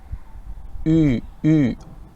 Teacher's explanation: the lips are like U, but inside the mouth you have to more or less keep everything as though you would pronounce an E. E. So basically E, but the lips like Ü, Ü.